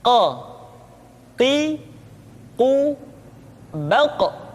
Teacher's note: Huruf Qaf diucapkan dengan cara menyentuhkan pangkal lidah kita dengan langit-langit bagian belakang. · diucapkan dengan suara yang tebal dan dalam posisi sukun maka terdengar pantulan suara